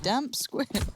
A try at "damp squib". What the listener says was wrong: Damp squib. That's squib, not squid.